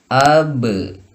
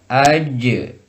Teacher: Pantulan ke e karena di sini disifati dengan sifat istifal. Si lidah ada di bawah.